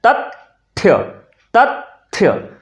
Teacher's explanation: अगर थ आया होगा तो उसके पहले अपने आप हम त का उच्चारण करने लगेंगे। हमारे मुख से अपने आप उसका उच्चारण हो जाएगा।